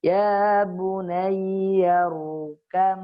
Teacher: ba bertemu mim. Maka langsung dibacanya ya bunayyar kam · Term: idgham mutaja nisain